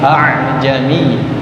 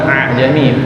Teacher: ingat hamzah ada di tenggorokan